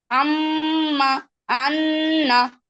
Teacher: তো দেখেন, ওই যে 17 নম্বর মাখরাজে আমরা শিখছিলাম নাকের বাসি হইতে গুন্না উচ্চারিত হয়